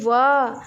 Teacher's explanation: यह निचले ओठ दांतों को स्पर्श करता है, इसीलिए इसे दंतोष्ठ व्यंजन कहते हैं।